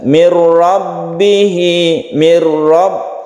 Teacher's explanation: nun mati bertemu dengan ro, idgham bila gunnah. Kita baca idgham artinya masuk ke ro, bila gunnah tidak dengan dengung, dengan tidak didengungkan atau tidak dipanjangkan, langsung ke ro.